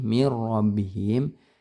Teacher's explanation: ini namanya idgham bila gunnah ya. Jadi jangan disertai dengung.